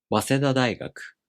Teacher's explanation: the first part becomes unaccented, and the accent falls on the first mora of the following part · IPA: [wasedadaꜜigaku]